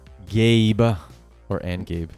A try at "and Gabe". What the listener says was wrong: No, you don't have to do the little, what is it, vocal trill? You can, Yeah, you can just make it your own.